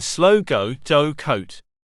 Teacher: this diff thong starts in the central schwar position the sound then Glides to the back close position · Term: diphthong